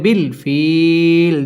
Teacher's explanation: মদের হরফের বামের হরফে ওয়াকফা আরজি তিন আলিফ টান দিয়ে ওয়াকফ করতে হবে